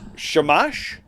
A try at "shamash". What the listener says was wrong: It's SHAMASH. So you can't separate it like a Christian. You got to say it like a Jew, where it's all one word. It's shamash.